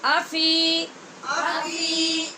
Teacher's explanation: یہاں حمزہ کو لمبا نہیں کرنا اور فی کو لمبا کرنا ہے